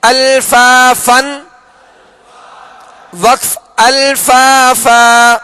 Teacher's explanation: یہ وقف کی صورت میں کیا کیا ہم نے؟ دو زبر کی تنوین کو الف سے بدل کر ایک الف کی مقدار میں کھینچ کر وقف کریں گے